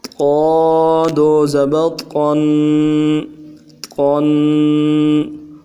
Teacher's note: تنوین کا مخرج غنّے کو ایک الف کی مقدار میں کھینچنا، غنّہ ناک میں آواز لے جانے کو کہتے ہیں۔